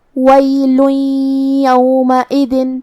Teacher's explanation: ہم یہ تنوین کو یا میں ملا کے غنہ اور تشدید کے ساتھ یہ حکم کو ادا کریں گے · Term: ادغام بغنہ